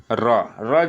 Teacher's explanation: र का उच्चारण लुंठित ढंग से यानी जीभ की हल्की स्पर्श गति से होता है, जैसे बोलने में हल्का जीभ स्पर्श करता है, इसलिए इसे लुंठित व्यंजन कहा गया है।